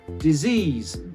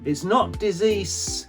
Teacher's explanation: So the S at the end sounds like a Z.